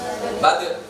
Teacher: Ini juga sifatnya ada kol-kola, memantul.